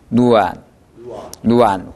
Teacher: 위의 입천장을 완전히 막아줘야 엔 발음이라고 했습니다. 그러니까 지금 엔 발음이 틀렸어요.